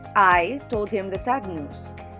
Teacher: the emphasis is on the pronoun i